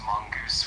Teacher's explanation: it's pronounced mongoose with the emphasis on the first syllable